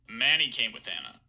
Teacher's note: you can hear me put that H star on the first syllable of Manny remember the first syllable of man who's the one that's stressed